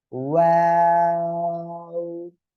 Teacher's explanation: দুই ঠোঁট শুরুতেও গোল হবে, শেষেও গোল হবে।